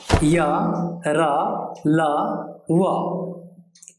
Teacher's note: ये वर्ण अर्ध स्वर भी कहलाते हैं क्योंकि स्वर वर्णों की तरह इनके उच्चारण में भी कहीं भी पूर्ण स्पर्श नहीं होता है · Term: अंतस्थ वर्ण